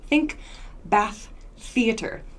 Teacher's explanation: so no vocal cord use here theater theater just air to make this th sound so it's very quick very short these are unvoiced th sounds